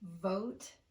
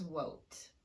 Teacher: When you pronounce V with rounded lips, what your listener is going to hear is W, because that's the lip shape that we use for the W sound.